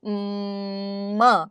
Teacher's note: Or ma, blocking it at the lips. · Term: nasal